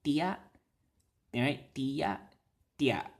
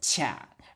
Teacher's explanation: It's just a glide, not a ch.